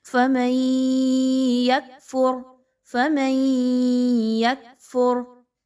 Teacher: غور کیجئے، فَمَن يَكْفُرْ بِالطَّاغُوتِ، فَمَن يَكْفُرْ، من، یہ جو آواز ہے، غور کیجیے، آواز ناک میں جا رہی ہے تھوڑی دیر کے لیے، نون کی آواز کے بعد یا آ گیا تو ہم نے کیا کیا کہ ایک حرف کی آواز کو دوسرے حرف کی آواز میں ہم نے مکس کر دیا۔ چونکہ دوسرا حرف جو ہے وہ تشدید والا ہے، مشدد ہے، تو اس لیے وہ زیادہ جو ہے وہ ڈومیننٹ ہے، زیادہ زیادہ پڑھا جائے گا. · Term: ادغام ود غنہ